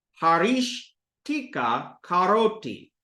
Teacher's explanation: Here, haris connects to the ta, that's retroflex, ta. So the sa is going to become a retroflex sha.